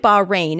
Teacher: the city of bahrain is pronounced locally i understand with a glottal fricative in the middle